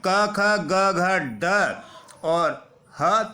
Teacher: संपूर्ण क वर्ग के पांचों वर्ण क ख ग घ ड और ह तथा विसर्ग का उच्चारण स्थान कंठ से किया जाता है